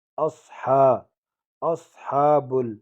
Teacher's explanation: اصحاب کڑا زبر ہے، ایک الف کی مقدار اس کو کھینچیں گے.